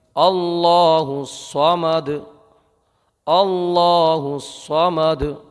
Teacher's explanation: اللہ کے لام کو پر پڑھیے، صاد کو برابر پر پڑھیے اور دال میں قلقلہ کیجیے۔